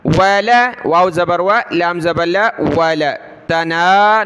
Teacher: ولا لام کو کھینچنا نہیں ہے